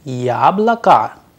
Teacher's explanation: It is pronounced as yablaka, which means apple, whereas it has two O, yabloko, but due to the stress on ya, the O sounds like a. That is why the pronunciation, the correct pronunciation is yablaka.